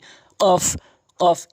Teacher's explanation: সহকারে ওখানে পড়বেন তো কফটি হচ্ছে জিহ্বার গোড়া হতে উপরের তালু জিহ্বার গোড়ার স্থানটি উপরের তালুর সঙ্গে লাগাবেন ধাক্কা দিয়ে কফ কফ এভাবে উচ্চারণ করবেন